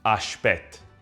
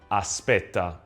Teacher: The S is softened to the sh sound in Neapolitan pronunciation and the final vowel dropped.